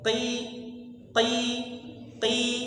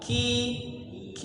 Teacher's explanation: jadi ketika Q tidak ada anginnya